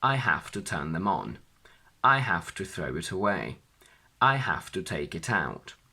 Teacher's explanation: When the object is a pronoun, it can only go between the verb and the particle, and the stress falls onto the particle.